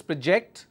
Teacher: I am stressing on the second syllable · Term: syllable stress